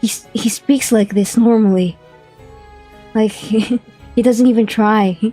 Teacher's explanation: He's very breathy and soft-spoken. Like he's trying to whisper into you. He's trying to whisper, but that's his usual voice.